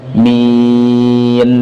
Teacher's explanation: Alami, mi senyumkan, akhiri dengan huruf nun, min. Kesalahan dalam mengucapkan min ini, pertama membaca dengan gunnah